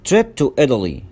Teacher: وهنا التاء نطقناها داء ساوند مش تاء ساوند لأن هي جت بين two vowels بين حرفين متحركين